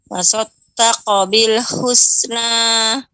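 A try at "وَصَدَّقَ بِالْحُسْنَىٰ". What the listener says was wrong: Kan wasod, dah ditipiskan. Wasaddaqa bil husna.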